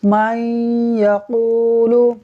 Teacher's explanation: دیکھیں نون ساکن کے بعد یا حروف یرملون میں سے ہے، لہٰذا ادغام ہوگا، یعنی ہم میم کو یا سے ملا دیں گے غنّہ کرتے ہوئے